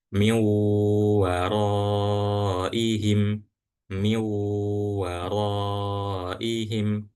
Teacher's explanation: Bighunnah atau dengan ghunah atau didengungkan. Jadi setelah langsung masuk ke huruf wau, maka huruf waunya ini dibaca dengung atau ditahan sebentar. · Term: idgham bighunah, idgham bi gunnah